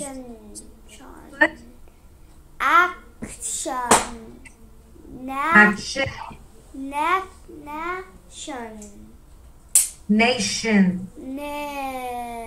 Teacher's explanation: it looks like ta, but we make a sound of T as sh, shun